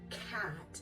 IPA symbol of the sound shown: k